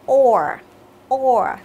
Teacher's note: tròn miệng bởi vì đây là âm O dài